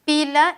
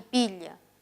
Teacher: una lateral alveolar, versus una lateral palatal.